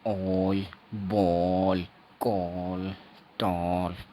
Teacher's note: ये ओ इसमें थोड़ा लंबा ओ हो जाता है